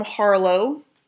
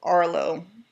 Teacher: my friends from North England like to also drop their etches